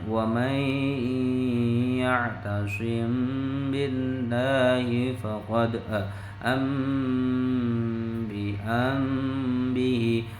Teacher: seolah-olah menyamarkan suara mim sukun ke dalam huruf ba